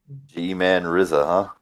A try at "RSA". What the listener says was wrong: RSA, if you pronounce it RZA. No I in there, but I think the RSA stands for something that's capitalized in the last part of his name. Like an acronym for something.